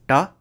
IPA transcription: ʈ